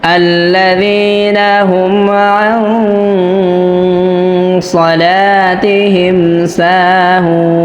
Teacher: তো এখানে নুন সাকিনের পরে সদ আসছে, তো বানান করার সময় তো আমরা সদ পড়ছিলাম না, কিন্তু যখন রিডিং পড়ছি বা সদ পড়ে ফেলছি তখন তো এখানে আমাদের তেলাওয়াতের সময় অবশ্যই গুন্নাহ করতে হবে। আর এই গুন্নাটি মোটা হবে, কেননা সদ একটি মোটা হরফ।